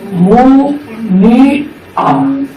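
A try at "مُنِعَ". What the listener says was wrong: না না, এখানে একটা জের আছে তো মুনিয়া মুনিয়া এটা আইন আইনটাকে উচ্চারণ করতে হবে একটু চাপা হবে আইন মুনিয়া মুনিয়া জিয়া বলো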